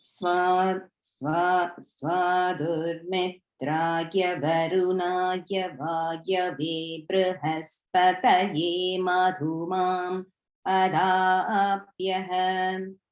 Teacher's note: notice the swa is down. So very first syllable is down one.